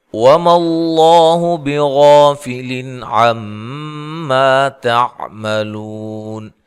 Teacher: موٹا ادا کرنا ہے، اس سے پہلے حرف پر زبر ہے، غین کو موٹا ادا کرنا ہے، الف کو بھی اس کے ساتھ موٹا ادا کرنا ہے